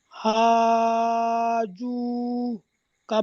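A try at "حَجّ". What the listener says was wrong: যে আপনি বানান করেছেন ঠিক আছে, কিন্তু বানানটি হয়নি। হা আলিফ জাবার হা নয়, হা জিম আলিফ জাবার হাজ। তিনটে একসাথে হবে, কারণ জিমের উপরে তো তাসদিদ আছে না, তাসদিদ আগের অক্ষরের সাথে মিলিয়ে পড়তে হয়।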